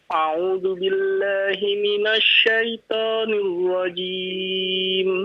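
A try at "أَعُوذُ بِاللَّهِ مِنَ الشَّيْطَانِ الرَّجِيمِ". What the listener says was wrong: Iya, bagus.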